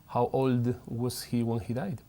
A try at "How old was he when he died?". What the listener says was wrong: Está bien, pero estás forzando la D.